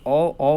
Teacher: ओ का उच्चारण स्थान कंठ और ओष्ठ होता है